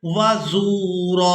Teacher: अब यहाँ पर हमने रा पर एक ज़बर अदा करनी है और इसको एक अलिफ मिकदार खींच कर अदा करेंगे, वज़ूरा, व इन्नल्लाह लअफ़ुव्वुन गफ़ूर।